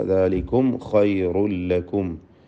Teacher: സാക്കിനത മീമിനെ ഇൽഹാർ ഷഫവി മണിക്കാതെ വെളിവാക്കുക.